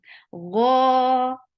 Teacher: it is heavy and 2 counts long